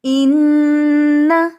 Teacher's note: ٹھیک ہے، اس کو انا نہیں پڑھیں گے بلکہ ناک میں آواز ٹھہرائیں گے، ایک الف یا 2 کاؤنٹس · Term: غنہ